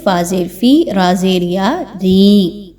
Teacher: را کو باریک پڑھتے ہوئے یا مدہ کی ادائیگی کریں گے